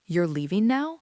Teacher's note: The rising pitch on the word now is what turns that statement into a simple yes no question. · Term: rising intonation